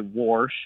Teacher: I hear that extra R get added occasionally